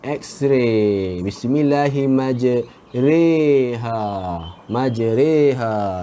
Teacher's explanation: kita tak boleh baca ra ataupun ri. Kita kena baca re. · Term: imalah